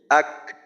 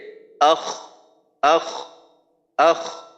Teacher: কাফের ক্ষেত্রে আক আওয়াজ বন্ধ হবে তারপর শেষের দিকে গিয়ে যখন মাখরাজ থেকে পৃথক হবো তখন একটু বাতাস বের করব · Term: সিদ্ধা